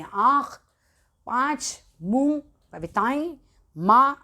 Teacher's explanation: चंद्र मात्रा लगती है तो वह अनुनासिक की होती है। इसके उच्चारण में हवा नाक और मुंह दोनों से निकलती है।